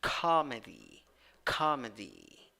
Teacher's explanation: 7, 6 letters, 6 sounds, 3 syllables. The first syllable is the one that is stressed. You have a in the first syllable.